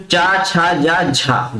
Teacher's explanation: जो दोस्तों च वर्ग होता है इस वर्ग के व्यंजनों को क्या कहा जाता है स्पर्श संघर्षी कहा जाता है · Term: स्पर्श संघर्षी व्यंजन